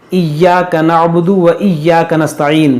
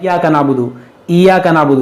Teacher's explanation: तो जो या पर है, जैसा कि आप स्क्रीन पर देख सकते हैं, या जो है या मुशद्दद है, उसको पढ़ना है दो बार।